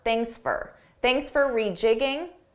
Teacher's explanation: I said, thanks for rejigging your schedule. Notice how for sounded like an unstressed fur.